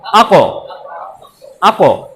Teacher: আক, ধরে রাখতে হবে। কিন্তু কফের উপরে আসলে ধরে রাখা যাবে না, ওটা হচ্ছে প্রতিধ্বনি করতে হবে।